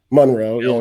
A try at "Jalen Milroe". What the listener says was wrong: No, wait, you said it wrong again. Milroe. You said Monroe, like Marilyn Monroe.